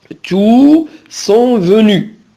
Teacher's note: quand tout est pronom, on prononce le S. Bien sûr, au masculin pluriel.